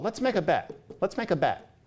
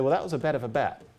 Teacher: we hear that as somebody saying bet in a way where they're opening their mouth wider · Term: the vowels are moving